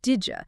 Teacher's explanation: Because the D sound and the Y sound blend together to make a D sound.